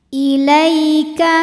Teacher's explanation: ada Ya Sukun didahului harakat fathah maka dibacanya cukup dilembutkan atau dilunakkan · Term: harfulfulin, harfulin